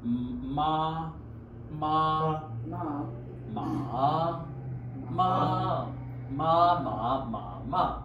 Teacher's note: first one was even. Second one rising. Third one fall and rise. Fourth one is fall